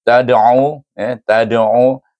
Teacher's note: ta alif dal duduk tengah kalimah baca dengan qalqalah sughra, kerana qalqalah bertemu dengan huruf ain itu bila dibaca sambung dengan ain dia akan menurun jadi qalqalah sughra.